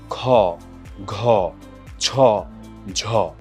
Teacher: সেটা হচ্ছে অল্পপ্রাণ ধ্বনি যেমন ক গ চক এটার উল্টোটা অর্থাৎ যেটা উচ্চারণের সময় বাতাসের চাপের আধিক্য থাকে সেটাকে হচ্ছে আমরা বলি মহাপ্রাণ ধ্বনি